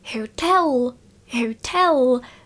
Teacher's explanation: to znamená to tel je nejsilnější a neříkám tam tl, ale opravdu éčko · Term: přízvuk